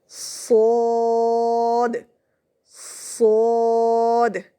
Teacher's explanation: सोद ये वहीं से अदा होता है जहाँ से ज़ा और सीन अदा होते हैं, मतलब आपकी ज़बान की नोक आपके नीचे वाले दांतों के साथ टकराने के साथ साथ आपके ऊपर वाले सामने वाले दो दांतों से भी टकराएगी और इसमें भी सीटी होगी सीन की तरह। सिर्फ फ़र्क ये है कि ये मोटा करके अदा किया जाएगा, सोद सोद, ऐसे, ठीक है।